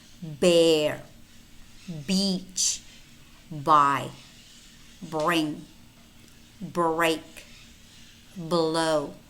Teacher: the voiced bilabial stop